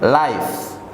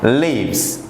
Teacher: for those words ending with the fa sound, we have to change it into va sound, then add es as expressed to the following examples.